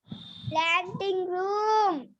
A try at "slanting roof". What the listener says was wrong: Roof, not room. Roof. Clear?